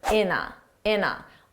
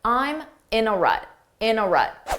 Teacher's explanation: And notice how in a sounds like one word.